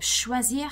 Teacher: we would be expecting the sound ch in English, the harsh ch sound, but it's gonna more likely sound sh in French, so a softer sound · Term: sh sound in French